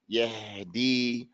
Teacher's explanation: As far as the ha, when we recite the ha and it has a sukoon, yahdi, then we don't want the air to stop. So we can't bring them together too hard.